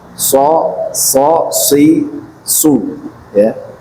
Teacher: As itu tetap seperti sin tapi dia tebal naik gitu karena dia punya sifat istilah ya. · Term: shad